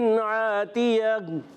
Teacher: اور گول تا کو وقف میں ہا ساکن سے بدل دیں گے. اس کو کہتے ہیں وقف بالابدال.